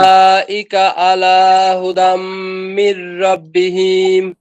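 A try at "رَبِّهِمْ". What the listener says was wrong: এই যে হিম টান হয়ে গেল, টানটা হবে না। রব্বিহিম। রব্বি, বা দুইটা তো, এই দেখেন এখানে রও দুইটা, বাও দুইটা, কিন্তু দেখা যাচ্ছে একটা একটা। এই কারণে ওই শব্দগুলা যেটা ভিতরে ডবল ডবল আছে, সেটা উচ্চারণে একটু সময় যাবে।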